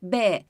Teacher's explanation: Ağzımız, dudaklarımız birbirine değmeden B harfini çıkaramayız. İşte burada engele takılıyor.